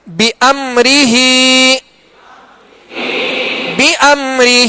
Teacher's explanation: بامرہ پہ میم ساکن ہے، میم ساکن کے بعد حرف را ہے. قاعدہ کون سا لگے گا؟ اظہار شفوی، غنہ نہیں کریں گے